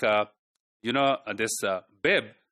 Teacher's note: this b is from the lips, both lips are touching each other, they are creating the air pressure